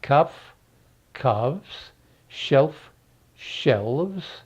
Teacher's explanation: usually or most often the f is changed to v